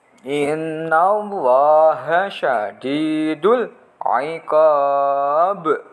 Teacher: Nun tasdid gunnah atau mendengung lama.